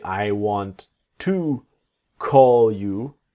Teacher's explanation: the word you will be like a yah sound